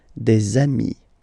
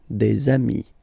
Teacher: And if you make the liaison, so the link between the two, you will get des amis.